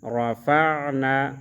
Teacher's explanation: را زبر را، فا عین زبر فا، نون الف زبر نا، رفعنا، را کو موٹا پڑھیں گے